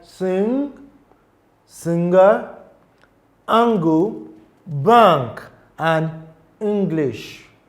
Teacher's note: The next set of word sound will be the velar nasal sounds, and it is formed by raising the back of the tongue to the soft palate, allowing air to flow through the nasal cavity and always creating a resonant nasal sound.